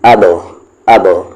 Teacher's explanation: با پہ جزم ہے تو قلقلہ ہوگا, آواز باؤنس کریں گے